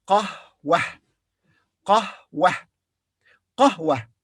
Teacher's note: the ta marbuta here is pronounced as ha because it comes at the end and we stop